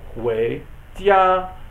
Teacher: Wei is arsheng or second tone, rising tone.